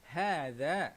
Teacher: zal dekat sini kita kena baca dengan keluarkan lidah